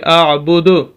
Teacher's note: اب یہاں پر دیکھیں ما اعبدو ہے، تو جیسے اس کو ساکن کریں گے اعبد ہو جائے گا۔ اب دال کی آواز کو ہم نے ساکن کیا اور اس کو ہلا کر پڑھنا ہوگا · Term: قلقلہ